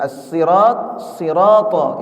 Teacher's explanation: Sekalipun ujung lidahnya disentuhkan ke gigi bawah itu, tapi dia ada yang diangkat ke atas, ya. Yaitu, ya, tengah lidah itu diangkat ke atas. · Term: huruf shad